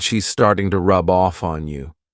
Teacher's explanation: I can take that b sound and connect it to the next next word